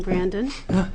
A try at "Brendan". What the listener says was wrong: it's Brendan with an E.